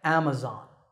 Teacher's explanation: when you say it correctly the first syllable is app and the stress is on this first syllable